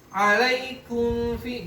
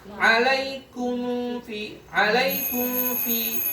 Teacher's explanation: Jadi belum ngerapat alaikum, tapi udah langsung masuk ke fa. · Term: ikhfa